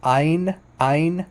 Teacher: In modern Hebrew, it's just pronounced like Ain. Ain. It's not. It's no guttural. It's not guttural at all. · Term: letter Ain